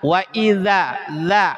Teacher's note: Jadi huruf da ini dari thful lisani wa thfusatainil ulyatain. Dari ujung lidah dan ujung dua gigi atas. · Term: makhraj dza